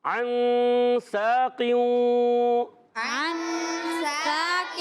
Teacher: عین کو ادا کرتے ہیں، عین کو ادا کرتے ہیں حلق کے درمیان والے حصے سے. عین نون سے ملائیں گے، نون ساکن ہو گیا.